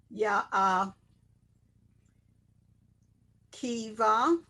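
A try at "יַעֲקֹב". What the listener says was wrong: What is the what's the vowel with the kuf? What's the vowel with the K sound? Why is it E? Where is the vowel? Over is O.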